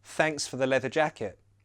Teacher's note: I don't change the th for F's and V's. I keep them the same.